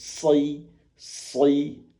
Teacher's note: ujung lidah ini tidak nempel ke ujung gigi seri atas, langit-langit, ataupun bawah, gigi bawah. Jadi tengah-tengah, sehingga udara murni keluar dari atas ujung lidah ini. Soy, tapi pangkal lidahnya naik.